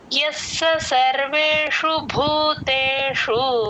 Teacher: స కింద స వత్తు య కి స ని జాయిన్ చేసి చెప్పాలి ఎస్ అని కొంచెం అలా డ్రాగ్ చేస్తే స కింద స వత్తు క్లియర్ గా వినిపించేస్తుంది